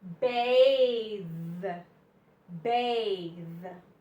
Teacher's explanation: it's a harder th your tongue goes between your teeth vvv and it vibrates a little bit okay bath bath this